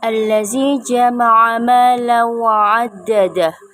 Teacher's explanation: karena ada fathatain bertemu dengan huruf wawu. Cara membacanya masuk dengan mendengung. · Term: idgham bihunnah